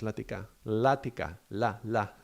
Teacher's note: The L at the beginning is not stopping the sound, it's letting the air flow just go around, and it's very soft, soothing. It's like a lullaby, It's soft, very different from a toil.